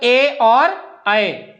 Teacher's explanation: इनका उच्चारण कंठ और ताल ये दोनों मिलकर के है